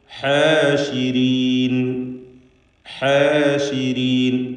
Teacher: ഹ ശ്രദ്ധിക്കുക, തൊണ്ടയുടെ മധ്യമാണ് അതിൻ്റെ മഖ്റജ്.